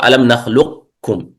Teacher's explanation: يعني ننطق قليل من القاف ثم الكاف، لكن بعض العلماء قال الصحيح أنه إدغام كبير فيكون كالكاف، ألم نخلقكم هذا.